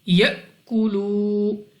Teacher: حمزہ ساکنہ کو ہمیشہ جھٹکا دے کر پڑھتے ہیں، تو ہم اس کو جھٹکا دے کر پڑھیں گے یأکلو.